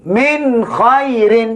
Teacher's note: Nun ni mesti mati terang dan nyata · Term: izhar halqi